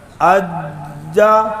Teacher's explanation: جی آگے کیا جیم ہے نا، اجا. آواز بند ہو رہی، سختی ہے، شد ہے